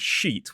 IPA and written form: ʃiːt (sheet)